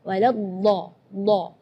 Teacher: huruf dot itu keluarnya dari pinggir lidah maupun yang kanan ataupun yang kiri atau dua-duanya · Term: huruf dhad